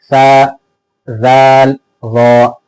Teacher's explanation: जबान की नोक और ऊपर के दो दांतों के किनारे। यानी जबान की नोक को सामने के ऊपर के दो दांतों के किनारे से लगाकर इन तीन हरूफ को अदा करते हैं। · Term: मखरज